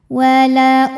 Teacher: dibacanya memantul dengan pantulan yang kecil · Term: Qalqalah Sugra